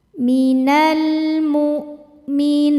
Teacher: Hamzah punya sifat namanya syiddah dari segi suara, suaranya tertahan saat kita tekan.